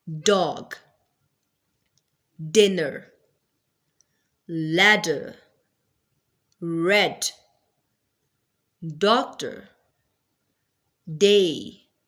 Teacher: Duh is a voice sound. It means that there will be vibration of vocal cords while producing this sound.